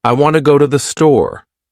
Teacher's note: In this sentence, want and store are stressed, and the other words are said quickly and softly. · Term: Sentence stress